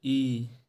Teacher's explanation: ई बोलते वक्त आप देख रहे होंगे आगे की जीभ क्रियाशील है, पीछे यानी जीभ नीचे चले जा रही है और मध्य वाला भाग बंद की तरह दिखाई दे रहा है।